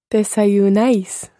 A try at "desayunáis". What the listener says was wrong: Desayunáis. Desayunáis. Try to get the ice. It's more an ice than an ace.